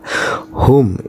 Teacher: Hum itu idhar syafawi karena mim mati menghadapi huruf waw